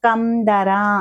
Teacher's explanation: కం అన్నప్పుడు రెండు పెదాలు క్లోజ్ అవ్వాలన్నమాట